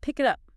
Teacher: The K sound at the end of pick links to the I in it. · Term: connected speech